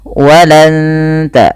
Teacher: Baik, ketika kita membaca ini jangan hanya yahud, tapi ditahan suara nunnya dan disamarkan ke huruf ta. Makhraj huruf ta ini ujung lidah menempel dengan perbatasan antara gusi atas dan gigi atas atau gigi sari atas. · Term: bacaan ikhfa